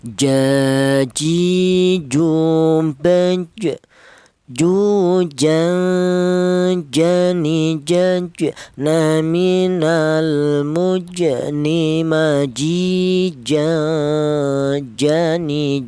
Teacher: Huruf jim ini keluarnya huruf berasal di tengah lidah